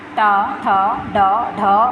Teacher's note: मूर्धन्य जिनका उच्चारण मूर्धा मुख की छत से होता है